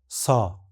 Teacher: इस ध्वनि के उच्चारण में जीभ का अगला भाग कठोर तालु के पास आ जाता है। फेफड़ों से आने वाली हवा संकीर्ण मार्ग से संघर्ष के साथ बाहर निकलती है।